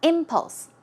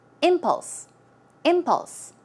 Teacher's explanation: as you see the stress goes on the first syllable